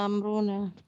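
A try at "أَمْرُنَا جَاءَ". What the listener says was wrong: Ya, kurang 6-6-nya kurang saya ulang.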